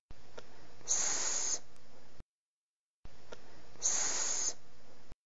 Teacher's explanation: Force air through the top of your tongue to hit your top teeth, producing a hissing sound. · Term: s sound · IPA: /s/